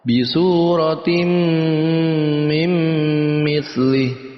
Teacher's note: Yang kedua nun mati bertemu dengan mim, ya, idgham bi gunnah juga. Maka kita masukkan tanwin kepada huruf mim, kita masukkan juga nun mati pada huruf mim, lalu kita dengungkan